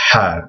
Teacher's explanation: It's almost like the sound that you make when you're taking off your glasses and you kind of blow from the back of your mouth to get uh to clean your glasses.